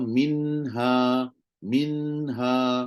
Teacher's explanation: bunyi Nun lidah pun ada rongga hidung pun ada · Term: izhar